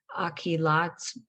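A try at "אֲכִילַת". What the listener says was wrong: Then just be very careful. The last word, there's no dot in it, so it's got a scratchy voice. Achilat.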